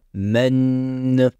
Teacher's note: Pour le N de man, on va appliquer une runna. La runna est un son qui provient de la cavité nasale et qui se traduit par des vibrations au niveau du nez.